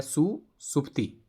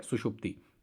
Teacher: दंत्य स का परिवर्तन मूर्धन्य श में हो गया